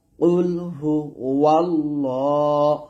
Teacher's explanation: লাম খারা জবর ল এক আলিফ টান দিবেন আর এটা মোটা হবে